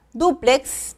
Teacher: duplex tiene acento en la primera sílaba